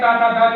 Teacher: और बात करें ता था धा ला की, तो ये हमारा दंत कहलाता है